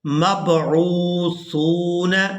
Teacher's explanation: عین کو واو ساکن کے ساتھ ملانا ہے تو کھینچ کر ادا کرنا ہے، اور اسی طرح سا کو واو ساکن کے ساتھ ملائیں گے تو کھینچ کر ادا کریں گے کیونکہ یہ واو مدہ ہے۔